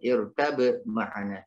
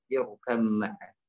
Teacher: Jadi, masuknya huruf ba' ke huruf mim. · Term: idgham mutajannisain